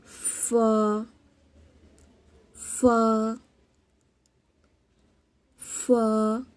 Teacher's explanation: ثنایا علیہ کا سرا اور نیچے کے ہونٹ کا اندرونی حصہ وہاں سے فا ادا ہوتا ہے.